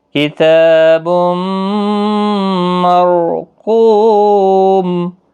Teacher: وما ادراک ما سجین کتاب مرقوم، تا کے اوپر کھڑا زبر ہے، تنوین کے بعد یرملون کا میم ہے، ادغام مع الغنہ ہوگا، رو بھی پر پڑھا جائے گا اس زبر کی وجہ سے، رو ساکن سے پہلے زبر ہے۔ قو واو مدہ ہے، قاف مستعلیہ ہے، پر پڑھنا ہے اور میم ساکن پڑھا جائے گا وقف کی صورت میں، وقف بالاسکان ہوگا، 3 سے 5 الف کے برابر کھینچ کر وقف کریں گے۔